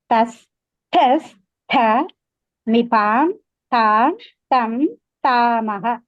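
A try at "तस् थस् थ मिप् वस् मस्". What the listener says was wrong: Super అండి.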